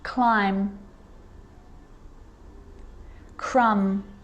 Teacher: i'm not pronouncing the b i'm just pronouncing the m consonant sound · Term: silent